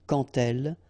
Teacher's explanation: when you will have this D, you will phonetically pronounce it like T.